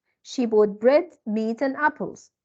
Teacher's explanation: falling rising and falling when we have a list like this when we have a list so our intonation goes up up up and then down